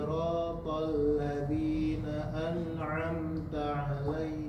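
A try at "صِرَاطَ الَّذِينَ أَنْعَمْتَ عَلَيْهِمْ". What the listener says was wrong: Ketika dibaca nggak ada lagi tuh, nggak ditahan lagi, tahan sedikit. An'amta.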